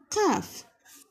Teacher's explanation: ज़बान की जड़ यानी अंदर की तरफ ज़बान की जो जड़ होती हैं वो तालू के सख्त हिस्से के साथ लग कर अलहदा होते हैं